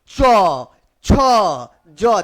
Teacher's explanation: तालू से निकलने वाला च छ ज देखिए आपका जो जीभ है वो कहां टच हो रहा